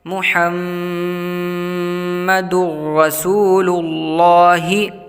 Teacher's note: تنوین کے بعد حروف یرملون کے 6 حرفوں میں سے را ہے، تو یہاں پر ادغام کریں گے بغیر غنے کے